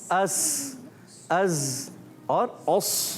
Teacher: मखरज के लिहाज से उर्फ़े असलिया और सिफत के लिहाज से उर्फ़े सफ़ीरिया कहते हैं।